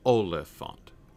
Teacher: The word Oliphant, right? Which is itself stress, unstressed, unstressed